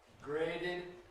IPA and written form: ˈgreɪdɪd (graded)